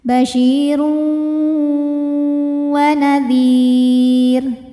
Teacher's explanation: Karena ada tanwin dhammah menghadapi huruf wau, maka tanwinnya masukkan ke wau basyiru disertai bunyi dengungan ya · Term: idgham bighunah, idgham bi gunnah